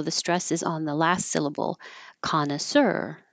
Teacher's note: This word is from French, so the stress is on the last syllable, connoisseur. And we're not saying it total French style, but we're keeping the stress in the last syllable, connoisseur.